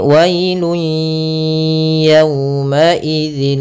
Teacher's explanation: kita memasukkan apa yang kita masukkan adalah suara tanwinnya atau suara nunnya ke huruf ya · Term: Idgham bunah